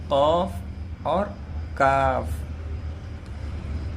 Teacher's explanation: ان حروف کو زبان کی جو جڑ ہے اور تالو، ان دونوں سے یہ ادا ہوتے ہیں۔ آپ فوٹو میں دیکھیں اور سمجھے کہ یہ جو ریڈ کلر کی ہے یہ زبان کی جو جڑ ہے آخر میں، اور اوپر کا جو تالو ہے، ان دونوں کو سے یہ ادا ہوتے ہیں۔